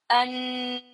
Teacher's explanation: I actually make my tip of my tongue touch the roof of my mouth for a long time.